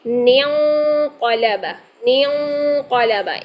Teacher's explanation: اب یہاں پر دیکھیے نون ساکن کے بعد قاف آ رہا ہے، تو نون ساکن کے بعد اگر قاف آ جائے تو وہاں پر اخفا ہوتا ہے